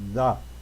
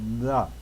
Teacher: So you put the tongue there on your, you put your teeth on the tongue, and then you sort of make a vocal sound. And then you take your tongue away quickly and make the vowel sound, in this case. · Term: TH sound